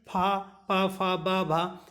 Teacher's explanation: पूरा पावर्ग जो होता है वो ओष्ठ होता है। आप देखेंगे दोनों ओठ एक दूसरे को स्पर्श करेंगे, इसे कहते हैं ओष्ठ व्यंजन। पा आप देखें, पा जैसे आपने पा बोला तो आपके ऊपर नीचे दोनों ओठ एक दूसरे को स्पर्श करते हैं।